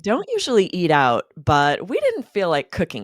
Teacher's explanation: We don't stay monotone as we insert the but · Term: interesting intonation